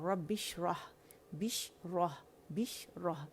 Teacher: ये रब्बिश्रह ली जो है बा मुशद्दद है, लेकिन शीन पे जस्ट 1 साकिन है।